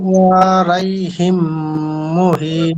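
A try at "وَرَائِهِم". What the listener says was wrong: হ্যাঁ, এখানে এই যে মিউ ওয়া রাইহিম, রাই নাই তো, এখানে রাই আছে দেখেন তো, রাই নাই, র আছে। মিউ ওয়া র, তারপর ইহিম, মিউ ওয়া র ইহিম।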